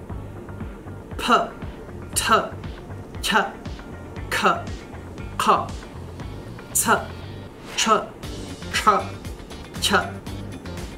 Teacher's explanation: Now we can also release them with or without a puff of air. So adding the puff of air makes the sound what we call aspirated.